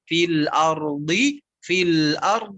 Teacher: Nanti tinggal diulang-ulang rumusnya tadi, diucapkan dulu harokat kasrohnya, kemudian nanti seakan-akan ditahan do-nya